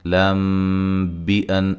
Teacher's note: میم ساکن کا اخفا ہے، میم ساکن کے بعد با آ رہی ہے